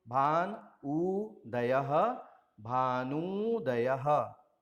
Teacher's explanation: उदाहरण है भानु धन उदयः। भानु का अंतिम स्वर उ है, उदयः का पहला स्वर उ है, दोनों मिलकर के दीर्घ उ में बदल जाएंगे।